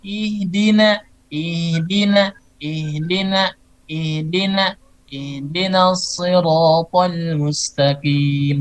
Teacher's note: H ini di bagian tenggorokan bagian pangkal atau istilahnya itu aksol khalqi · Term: huruf H